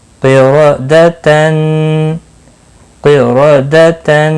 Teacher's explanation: بن کوتبن کوتبن قاف اور را دونوں پر پڑے جائیں گے قاف مستعلیہ ہے پر پڑا جائے گا را زبر کی وجہ سے پر ہوگا قاف زیر قی را